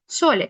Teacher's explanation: pronuncia la S realmente como un sonido sordo